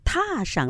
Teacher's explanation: 踏上的那个上呢，又可以读轻声的